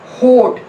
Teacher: होठ में जो ओ आता है, तो हम यहाँ पे देखिए इसकी जो हमारी इसकी पोजीशन है जस्ट ओपन के ऊपर है, तो ये है हमारा back rounded vowel just अबाउ open position